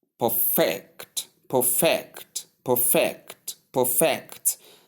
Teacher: in the verb aspect of it, there is a shift from the first syllable stressing to the second syllable stressing. And that makes the word lose its force on the first syllable.